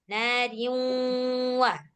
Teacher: Masuk dan berdengung. Jadi langsung masuk nih ke waw. Nariwa gitu. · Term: idgham bi gunnah